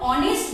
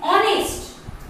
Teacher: हॉनेस्ट नहीं बोल रहे हैं, H साइलेंट हो जा रहा है